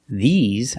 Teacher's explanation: the mouth is more closed and you smile a little bit and the S makes a z sound like zebra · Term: long e